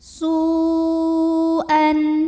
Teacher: Kemudian hamzahnya yang an, satu kata yaitu pada kata su'an. Maka sinnya ini dipanjangkan, boleh 4, boleh 5 harokat. Su'an. Kemudian di sini ada hukum izhar halqi, sebab ada tanwin fathah yang menghadapi huruf halqi atau huruf tenggorokan yaitu hamzah. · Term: mad wajib muttasil